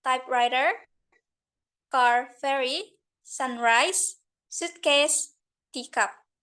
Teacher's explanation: Yang pertama ada stress yang di first element.